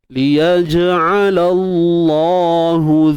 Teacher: jim qalqalah sughra kita lantunkan dalam keadaan yang bersahaja ataupun lemah.